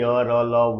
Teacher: इनका उच्चारण जीभ, तालु, दांत और ओठों के परस्पर सटने से होता है, लेकिन कभी भी पूर्ण स्पर्श नहीं होता है ना। मतलब जिससे भी उच्चारण इसका होता है जीभ, तालु, दांत और ओठ से, लेकिन दोनों परस्पर पूर्णतः नहीं सटते हैं, अधूरा सटते हैं और इसका साउंड निकलता है य र ल व का। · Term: अंतस्थ व्यंजन